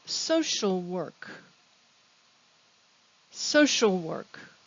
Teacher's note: compound social work social work it's a study and a profession the stress is on the first syllable